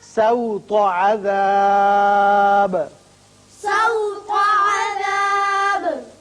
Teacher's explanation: سین باریک ہوگا، تو کو پر پڑھیں گے